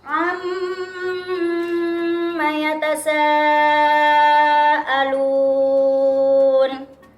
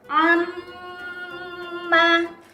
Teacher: mim bertasydid dibaca mendengung selama 1,5 alif atau 3 harokat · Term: gunnah